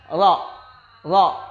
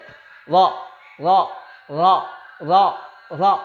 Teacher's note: Ketika menyebutkan huruf ra, maka R-nya tidak boleh terlalu banyak. Cukup satu kali saja, disentil. Huruf ra. Ya, R-nya ketika menyebutkan huruf ra itu cuma satu kali.